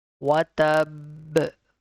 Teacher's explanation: Hold the ba and make sure the sound will bounce back because this is a letter of qalqala